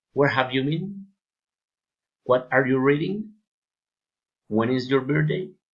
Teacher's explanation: Friendly interest, politeness, rising intonation.